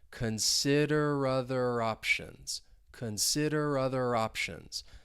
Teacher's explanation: We can link those 3 words together, and I'm linking that final R with the beginning vowel sound, and it's almost like we're moving it over